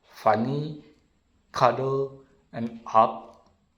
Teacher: the half open central vowel